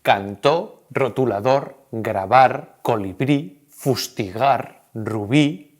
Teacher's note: todas esas palabras que son agudas tienen el golpe de voz en la última sílaba cuando se acentúan se acentúan siempre que esa última sílaba termine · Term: palabras agudas